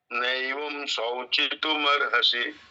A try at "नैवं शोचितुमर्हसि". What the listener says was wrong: शौचितु नहीं है। सौ से तो दो मात्रा ऊपर हो जाती है। शहद बोलिए एक बार। शहद। शहद। शहद। श के साथ थोड़ा ये मिलाइए। शहद। आधा स और ये मिलाइए। शहद। हाँ, शाही बोलते हैं ना, शाही। तो श और ये आधा स और ये होता है, ऐसे ये है। शहद। शहद है वैसे ही।